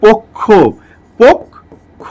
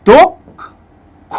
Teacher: একটা বোনাস সূত্র দিচ্ছে, খেয়াল করে দেখেন, যদি শব্দের শেষে কয় মূর্ধন্য স থাকে, শব্দের শেষে যদি কয় মূর্ধন্য স থাকে, তাহলে অবশ্যই তার সঙ্গে একটা ও উচ্চারিত হয়